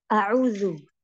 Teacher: U-nya dua harokat, lalu tidak boleh ada jeda antara A ke U.